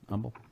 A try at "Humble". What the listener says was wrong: Yeah, you can't- You can't pronounce the H. big no-no.